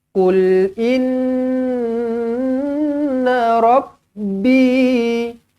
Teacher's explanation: Inna nun sabdu. Di sini sabdunya didengungkan 2 harakat, tetapi na tak panjang. Bila saya kata nun sabdu dengungkan 2 harakat, bermakna dia punya in tu.